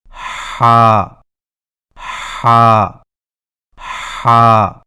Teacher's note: ہا کی درست آواز کی پہچان یہ ہے کہ ادائیگی کے وقت گلے میں کچھ دباؤ سا محسوس ہوگا